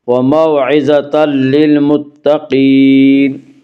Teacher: وموعظۃ للمتقین میں ادغام بلا غنہ ہوگا۔ اس کا قاعدہ یہ ہے کہ نون ساکن یا تنوین کے بعد اگر حروف یرملون میں سے کوئی حرف آئے تو ادغام ہوگا، لام اور را میں ادغام بلا غنہ ہوگا۔